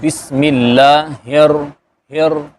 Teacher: را کے اندر صفت تقریر بھی ہے، یعنی تھوڑی سی زبان کے اندر تھر تھراہٹ آتی ہے، تو بسم اللہ ہر، ہر یہ ہو جائے گا۔